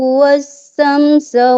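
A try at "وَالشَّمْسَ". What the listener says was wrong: Tadi syah, coba wasyamsa. Coba sebut huruf shin.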